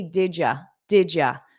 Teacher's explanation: Notice that pronunciation of did you, did you, did you, did you. And very unstressed, you can say did ya, did ya.